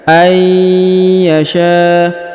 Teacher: Jadi huruf nun sukunnya menghilang, melebur ke huruf ya yang bertasdid.